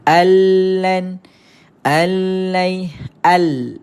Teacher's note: sebutan Nun ini dimasukkan ke dalam lam maka sebab tu kita tak dengar bunyi Nun dah · Nun ni tak ada dah. Sebab nun dah masuk ke dalam lam. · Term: Idam Bila gunah, Idgham bila gunna